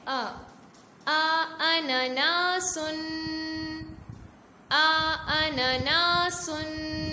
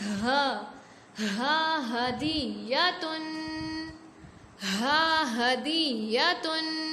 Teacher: حمزہ اور ہا حلق کے سب سے آخری حصہ یعنی اقصی حلق